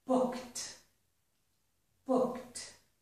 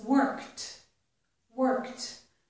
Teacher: If my verb ends in k, as in the word book, or the word work, and I add ed, the ed sounds like t.